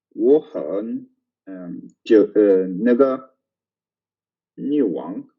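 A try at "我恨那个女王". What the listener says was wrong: Yeah, I will tell you that the pronunciation was good, except the hate. It gets very obvious when it's a 4th tone and you don't say the 4th tone. Then it gets obvious, but it's not very important for this word, so I'm going to ignore it.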